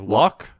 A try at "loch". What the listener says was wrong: You need more phlegm in it.